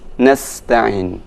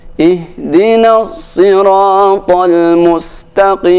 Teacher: untuk huruf sin itu dibaca dengan tipis nasta'in. Adapun huruf shad dibaca sedikit ada penebalan, yaitu sedikit dimonyongkan